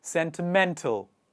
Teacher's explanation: The stress comes on the latter part of the word, towards the end of the word. Sentiment, sentimental.